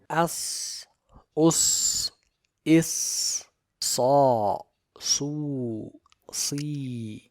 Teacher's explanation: Starting with the letter Sad, it has hams, rakhawa and safir.